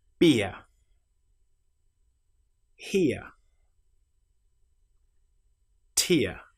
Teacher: we start with the shape I and we end with our very common sound uh ear. This is again this change of shape creates a different sound to the short vowel sounds that we previously made, but it's a very useful one because it's used regularly in the English language.